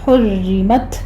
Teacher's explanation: حرمت میں را تشدید والی ہے لیکن کسرہ والی ہے تو یہ را باریک پڑھی جائے گی، تا پر ہمس ہوگا